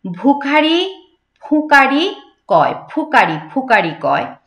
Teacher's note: একদম ঠোঁট দুটো আমাদের এই ঠোঁট দুটো লাগবে একসাথে